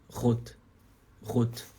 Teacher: não vibra tanto não vibra só um pouquinho é só assim ó Rot Rot vibra só rapidinho não é